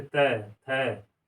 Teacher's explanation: तय वर्ग के व्यंजनों का उच्चारण जो है दंत, जब हम उच्चारण करते हैं तो जीभ जो है दांत को टच करती है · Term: दंत व्यंजन